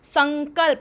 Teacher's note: म छिप गया लेकिन न का उसने साउंड दे दिया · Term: अनुस्वार